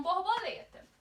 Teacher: Se a penúltima é que é a mais forte, então nós temos aí uma paroxítona.